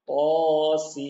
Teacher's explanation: Jadi bukan sin, ujungnya bukan nun, tapi langsung langsung langsung mim.